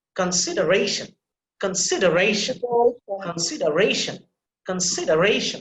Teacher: You see, ration, ra sound that is emphasized.